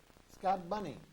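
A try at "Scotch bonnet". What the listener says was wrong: Not bunny. It's B-O-N-N-E-T.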